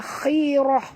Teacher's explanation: huruf kha ni walaupun baris bawah tetap tebal ya